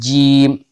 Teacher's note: अब बीच जबान को हम तालू से अगर हम मिलाएंगे तो जीम अदा होगी। जीम देखो, कह के देखो, सब लोग कह लेते हैं जीम, तो वही बीच जबान तालू से लग रही है, ऊपर लग रही है।